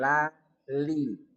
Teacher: Li dari dua sisi lidah hingga ke akhir ujungnya bertemu dengan gusi atas di hadapannya.